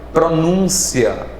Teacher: o N nasaliza a vogal U